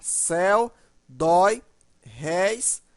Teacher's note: elas são monossílabos e tem pronúncia aberta